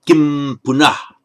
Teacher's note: The anuswara, the final subdotted M as we write it in Roman script, tends to take on the sound of the consonant that begins the next word. And if the next word begins with a vowel, then it's pronounced as a pure M, just like an English M.